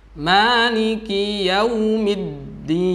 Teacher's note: Dal di situ ada tasydid, maka dinabr, ditekan.